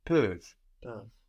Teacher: This is spelled P-E-U-V-E-N-T. E-N-T on the end of verbs in French isn't pronounced, but it is making us hear that V before it